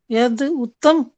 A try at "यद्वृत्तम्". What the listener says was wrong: उत्तम तो नहीं, यहाँ भी नहीं पूरा। वृत्तम, हाँ यद वृत्तम, ये द के नीचे वृत्त लिखा है।